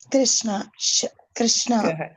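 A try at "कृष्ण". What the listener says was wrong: கிருஷ்ணா கிருஷ்ணா இன்னும் கொஞ்சம் வரணும், இன்னும் கொஞ்சம் வளையணும்.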